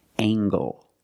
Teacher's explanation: We have angle, spelled L-E, making the nasal sound and the hard G.